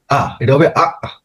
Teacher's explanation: হামজা জবর আ, এখানে গলার শেষে গিয়া থেমে যাবে, বাতাস বের হবে। হ্যাঁ, মুমিনুন একটা ধাক্কার মতো লাগবে, কিন্তু পুরোপুরি ধাক্কা না, আপনার বাতাস বের হবে না, থেমে যাবে।